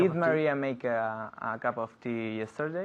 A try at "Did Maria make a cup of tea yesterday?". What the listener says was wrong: Muy bien, very good.